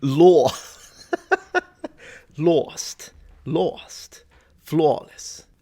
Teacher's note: the a sound gets stretched out further to the bottom part of the mouth and it gets like a d in front of it so